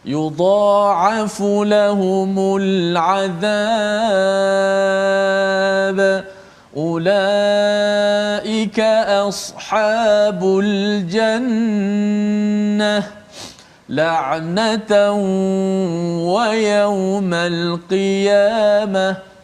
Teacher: Kalau kita perhatikan pada lam al-azab, al-jannah, al-qiyamah, lam itu dibaca dengan lam qamariyah itu dibaca dengan izhar. Kenapa? Kerana bertemu dengan huruf ain, bertemu dengan 14 salah daripada satu daripada huruf qamariyah.